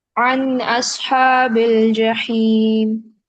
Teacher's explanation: नून साकिन के बाद हमजा आ रहा है तो यहाँ इजहार होगा